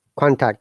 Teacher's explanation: we have to stress the first syllable of the word contact so it is higher intonation to lower in falling intonation or